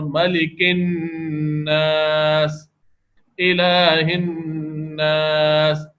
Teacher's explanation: یہ سب غنہ ہوتے وقت ناک میں آواز گھمائی جا رہی ہے